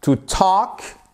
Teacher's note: you do not pronounce the letter L